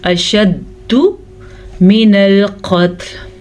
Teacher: اب شد کے اندر در حقیقت 2 دفعہ دال ہے، شد 2 حروف کا مجموعہ ہوتی ہے، تو یہ دال ہے پہلی دال ساکن تو قلقلے والی ہوگی، تو یہاں پہ زبردست قلقلہ ہوگا